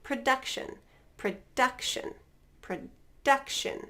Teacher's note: So first is a noun, production, production, production. So we're stressing duck, production.